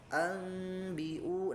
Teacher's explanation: maka didengungkan ke hidung gitu ya. Dirasakan pasti ya masuk ke hidung ini gitu ya. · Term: musyaddad